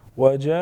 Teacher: वजाऊ अलिफ मद्दा साथ में बड़ा मद 5 से 6 अलिफ के बराबर खींचेंगे